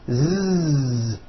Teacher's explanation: So S has no voicing. Z has voicing. Z. So we say the S sound and the Z sound are also paired consonants.